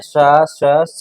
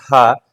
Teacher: स स और ह उष्म वर्णों की संख्या चार होती तो तीन वर्ण हमारे अघोष है और एक ये ह वर्ण जो है यह सघोष है